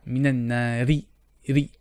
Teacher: So usually if you read this word and you will not pause or stop on this word, the ra kasra will be read flat